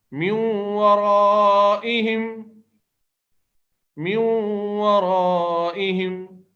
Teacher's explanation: اب دیکھیں یہاں واو پہ جو تشدید ہے یہ ورائہم کی نہیں ہے، یہ قاعدے کی وجہ سے آئی ہے کہ نون ساکن کے بعد واو آیا ہے تو اب تشدید لگا کر ادغام مع الغنہ کرنا ہے.